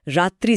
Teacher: त्र बोलते समय जो र का कंपन होता है वह थोड़ा थकाऊ है